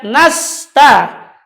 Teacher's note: Ujung lidah dengan gigi seri bawah. Nasta, dan dia tipis. Sifatnya mengalir dan ada angin. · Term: huruf sin